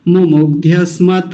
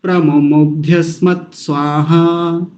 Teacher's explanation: त को पूरा नहीं करेंगे त आधा है हलंत लगा हुआ है वही रुक जाएंगे